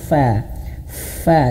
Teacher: karena huruf fa ini dia mengalir nafas, hams nama sifatnya.